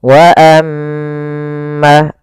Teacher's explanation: Cara membacanya suara mnya ditahan dua harakat. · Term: gunah